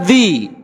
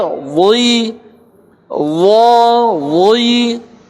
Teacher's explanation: karena dia diangkat pangkal lidah walaupun kondisi kasroh, maka terbaca tebal. Harus beda dengan dzi, dengan dzal.